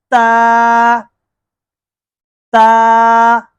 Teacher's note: زبان کا سیرا اور ہمارے جو سامنے والے دانت ہیں اوپر والے، ان کی جڑوں سے ادا ہوتا ہے، زبان کے سیرے کو وہاں پہ لگائیں، ویری گڈ ویری گڈ، جی ہاں۔